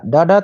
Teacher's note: ड, ड तो मूर्धन्य है। गलत हो जाएगा।